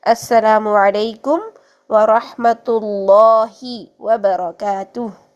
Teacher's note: اس میں جلالہ سے پہلے جب زبر ہو یا پیش ہو تو اس میں جلالہ کو ہم موٹا پڑھتے ہیں